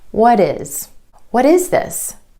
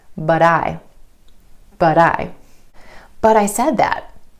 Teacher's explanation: A recap on flap T, or the D sound, you're going to hear this quick D sound when the T comes between 2 vowel sounds, whether that's within a word or in between 2 words.